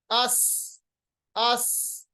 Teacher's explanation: ये जो आवाज तेज हम निकालते हैं एक्चुअली ये सीन की सिफत है, सिफत सफीर इस सिफत को कहते हैं।